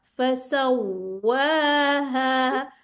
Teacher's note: वाव पे पूरे-पूरे रोल होने चाहिए। वाव को दो दफा आया है।